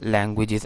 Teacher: So the stress is on the first syllable, languages